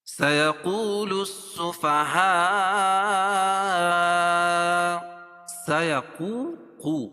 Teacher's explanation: سيقو وہ مدہ ہے اور قاف کو پور پڑھیں گے